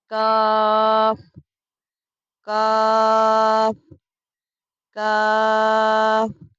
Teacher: کاف زبان کی جڑ اور تالو کے سخت حصے سے ادا ہوتا ہے۔ یہ ڈنڈی والا کاف ہے۔